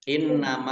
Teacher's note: Nun tasdid ya dibaca gunah atau mendengung ditahan dua harakat